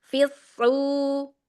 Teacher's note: Shadnya angkat isti'la dan itbaqnya.